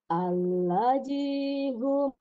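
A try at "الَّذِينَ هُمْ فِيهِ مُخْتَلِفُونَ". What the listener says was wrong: ya kepanjangan masih sedikit Bu sedikit kepanjangan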